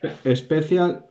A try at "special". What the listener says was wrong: muda. La I es muda. Y como una sh. So, special.